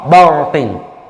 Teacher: Tetapi justru itu yang harus kita hindari, ba-nya nggak boleh ikutan tebal. Ro-nya betul tebal, ba-nya tidak boleh tebal. Ya, barqin, ba tipis tidak boleh, barqin.